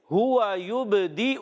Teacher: با میں قلقلہ ادا کریں گے، حرف قلقلہ سے ہے